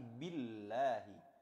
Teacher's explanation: yang didahului berharakat kasrah maka dia statusnya Billahi tipis dibaca tipis